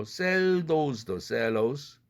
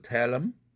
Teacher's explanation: the 사운드가 탈락되는 사례를 보고 있습니다